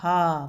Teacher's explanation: मुख गुहा खुली रहती है और वायु बंद कंठ को खोलकर झटके से बाहर आती है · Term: काकल्य वर्ण